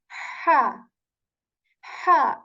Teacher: this ha is articulated from the middle portion of throat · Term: letter ha